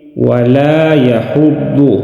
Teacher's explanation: ضاد کو موٹا ادا کریں گے، مستعلی حروف میں سے ہے